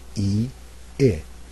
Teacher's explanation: when I say the first vowel e and then I say the second vowel I my jaw is a little bit lower for I